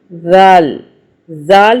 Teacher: زال سیٹی والی آواز نہیں بنانی، جیسے کہ اس کو ہم زا کہتے ہیں تو سیٹی کی آواز بنتی ہے، اسے سافٹ ادا کرنا ہے۔ اسی طرح زبان کو اوپر ہلکا سا باہر دانتوں سے، زال زال زبر زا، نون زبر نا، قاف زبر قا۔